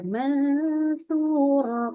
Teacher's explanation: Jadi ini sudah, jangan lupa dia adalah ikhfa hakiki. Jangan lupa dia kita tambahkan dengung dan dengung adalah 3 harokat.